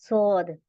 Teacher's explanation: heavy बनाने के लिए हमारी जबान पीछे से उठती है यह देखि आप सौद में पीछे से उठ रही है ना